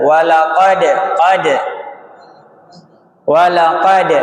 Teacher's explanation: Mantul tanpa tertahan suaranya. Mantul ya mendal seperti bola begitu. Enggak berhenti, enggak mentok. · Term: qalqalah